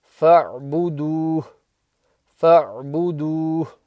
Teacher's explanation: So you still stretch the do, but the ha becomes sakin. So it's do. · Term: ha sakin